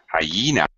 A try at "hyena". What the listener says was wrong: It sounds like hyena. It's actually three syllables. Hyena. Hyena. Very small word to be three syllables, but it is.